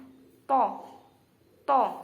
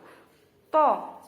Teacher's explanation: huruf to ini makhrajnya yaitu punggung ujung lidah mengenai pangkal gigi depan atas. Nah, awas ya, harus diperhatikan karena huruf to ini ujung lidah jangan sampai keluar atau kelihatan dan jangan tidak sampai menyentuh pangkal.